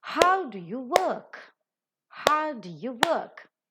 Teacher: How is accented? Work is accented because how is an interrogative pronoun and work is a verb.